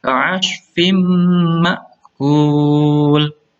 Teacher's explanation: Lanjut yang selanjutnya ka'ashfim, harus dibaca dengung karena bacaan idgham ya, melebur masuk ke huruf mim, langsung mingkem